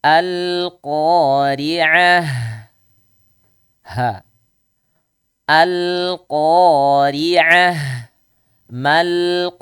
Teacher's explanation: ri roknya dibaca tipis. Kenapa? Karena harokatnya kasrah.